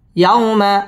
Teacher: ইয়াও জবরের বাম পাশে জজম ওয়ালা ওয়াও লিনের হরফ তাড়াতাড়ি পড়তে হবে